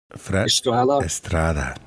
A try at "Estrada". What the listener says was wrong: No, you gotta roll that R, man.